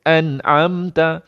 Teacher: nun tanda sukun tak dengung, mim tanda sukun tak dengung. Jadi baca pendek. Tak boleh an'amta, tak boleh.